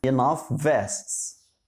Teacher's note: كلمة enough آخرها صوت ال f، صوت ال f، وكلمة vests تبدأ بال v، صوتها v. فلما قلت enough نطقت ال f وأخدت معاها صوت ال v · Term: similar consonants